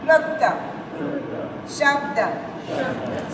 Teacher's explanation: So you don't say Shabada or Palota. No, the vowel is not there.